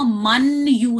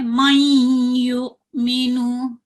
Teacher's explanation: नून की आवाज आधी निकाल के उसको या में दाखिल करते हैं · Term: इदगाम माल गुन्ना